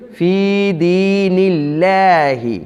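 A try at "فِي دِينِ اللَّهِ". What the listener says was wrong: ऐसे नहीं पढ़ेंगे फ़ी दीनिल्लाह, गलत। अल्लाह के लफ्ज़ को पूर्ण तब पढ़ेंगे जब ज़बर होगी पहले उससे या पेश होगी।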